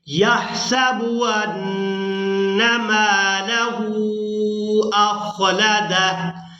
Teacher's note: میم کو اور ہا کو کھینچیں گے کیونکہ میم کے ساتھ الف مدہ ہے اور ہا کے اوپر ہے الٹا پیش اور مد